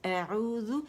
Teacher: زو، اگر آپ زو کریں گے نا، زیادہ زبان باہر نکالیں گے یا زبان کی جڑ اٹھا لیں گے، زبان اٹھا لیں گے، تو ذال موٹی ہو جائے گی. اعوذ، حمزہ جو ہے وہ اقص الحلق سے، عین جو ہے آپ کا وسط الحلق سے ادا ہوگا